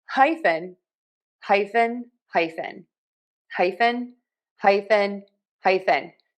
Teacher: stressing syllable number one the high